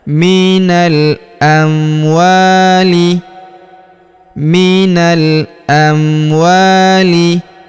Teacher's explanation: Huruf wa kita panjangkan dua harakat karena terdapat alif di depannya.